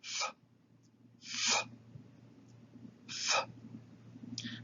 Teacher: Theta is almost like the delta, except that it is voiceless. You do not engage the vocal cords. So theta is like the TH without the vocal cords.